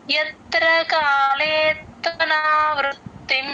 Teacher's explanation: త కింద త వత్తు అత్త అంటాం కదా ఆ చిన్న స్ట్రెస్ అన్నమాట వృ తేలిగ్గా చెప్పాలి ఎట్ ద సేమ్ టైం త కింద త వత్తు వినపడేటట్లు చెప్పాలి